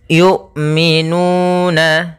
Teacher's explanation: Di sini huruf hamzah yang mana makhraj daripada hamzah itu dari pangkal tenggorokan kita yang mendekati dada kita